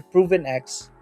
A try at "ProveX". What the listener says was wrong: without the N, without the N.